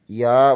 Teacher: وسط زبان بالمقابل اوپر کے تالو سے لگے تو یا ادا ہوتا ہے